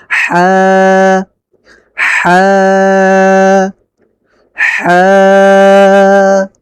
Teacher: কণ্ঠনালীর মধ্যখান হইতে হা উচ্চারিত হয়, অর্থাৎ আপনি গলাকে একটু চেপে রাখবেন, চেপে চেপে।